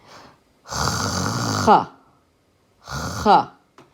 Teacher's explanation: The back of your tongue is hitting the back of the roof of your mouth. And you're cutting off the airflow and releasing it. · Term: the ch sound